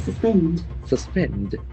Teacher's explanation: So here we have two syllables, accent falls on the second syllable.